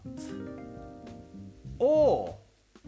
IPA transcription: ɔ: